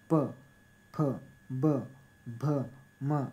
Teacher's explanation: यांचा उच्चार ओठाद्वारे म्हणजे ओठ जोडून उच्चार केला तर म्हणून त्यांना ओष्ट म्हणतात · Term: ओष्ठे